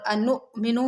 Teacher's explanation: حمزہ جہاں پر ساکن ہوتا ہے وہاں پر اس کو ہلکے سے جھٹکے کے ساتھ پڑھا جاتا ہے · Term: حمزہ ساکن